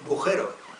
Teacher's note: La vocal A se omite en bujero